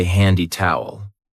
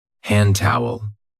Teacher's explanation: We don't usually say handy towel. We link it and we say hand towel.